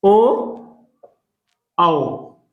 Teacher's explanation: कंठोस्थ, जहां पर कंठ और ओठ तथा जीभ के सहयोग से जिन वर्णों का उच्चारण होता है वो कंठोस्थ के अंतर्गत आते हैं, जैसे ओ, औ।